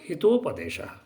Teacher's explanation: जैसे कि हित प्लस उपदेश, अकार है पुनः उकार है, तो दोनों मिल जाने से क्या हुआ? ओकार हो गया।